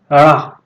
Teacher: जब ड़ा बोलेंगे तो जबान उछल करके आगे को दांत से टकराती है, इसलिए इसे उच्छिष्ट व्यंजन कहा जाता है।